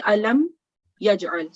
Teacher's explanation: Therefore, the izhar shafavi rule applies, which says that you should pronounce the meme sakin sound clearly for 1 second with no nasal sound